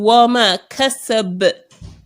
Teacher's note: The echo going with the ba is actually the qalqala.